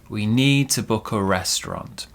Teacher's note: small stress on need big stress on the big noun that comes later